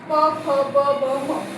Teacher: काय दोन्ही ओट एकमेकांना चिटकणारे ते कसं प फ ब म बोलताना काय दोन्ही ओट काय आपले बंद होतात आणि एकमेकांना काय लागतात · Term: ओष्ठक